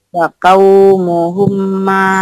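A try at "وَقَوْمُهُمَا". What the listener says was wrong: Jangan humma, ada tasdid. Wa qaumuhuma.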